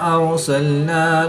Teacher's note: را ساکن سے پہلے حرف پر زبر ہے تو را کو پورا یعنی موٹا پڑھیں گے۔